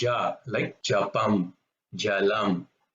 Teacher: it's not a Mahaprana, no emphasis, but it's a harder sound